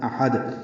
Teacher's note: احد میں حمزہ کو اقصی حلق سے ادا کریں گے، ہا وسطی حلق سے ادا کریں گے، دال سے ملا دیں گے، دال ساکن میں قلقلہ ہوگا.